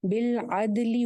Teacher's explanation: لیکن لام کی زیر لمبی نہیں کرنی